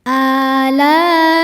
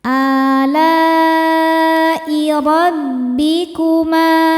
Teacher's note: Mad thabi'i nya alif didahului harakat fathah, kemudian hamzah nya i terdapat pada kata alai. Maka lam nya panjang, boleh empat boleh lima harakat. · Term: mad wajib muttasil